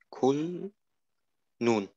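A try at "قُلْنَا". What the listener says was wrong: Nicht nun, sondern das ist ein Nun, aber da ist ein Fetha. Und wir achten, dass der A mehr zum G rauskommt. Eigentlich ist es falsch, jetzt zu sagen Gulna, Gulna.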